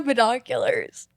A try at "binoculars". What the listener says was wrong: It sounded like you said pedonculars.